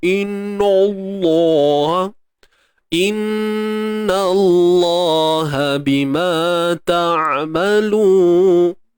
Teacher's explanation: Lam kalimah Allah ni kena tebal.